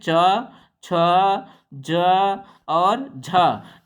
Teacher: स्पर्श करते हुए जुबान हमारी संघर्ष के साथ आएगी इसीलिए इनको हम क्या कहते हैं स्पर्श संघर्षी व्यंजन कहते हैं